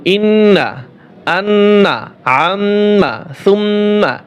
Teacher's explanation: নাকের বাঁশি হইতে গুন্না উচ্চারিত হয়